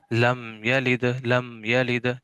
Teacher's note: लम कलकला नहीं करना भाई, कलकला करेंगे तो वो जो है वो सिफत कलकला जो है वो इसमें दाखिल हो जाएगी, जबकि सिफत कलकला जो है वो इसमें इसके अंदर नहीं है, ठीक है।